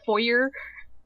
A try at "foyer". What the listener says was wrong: It's pronounced foyer, not four. Foyer, whatever you want to say. It's foyer. I've only heard it called foyer.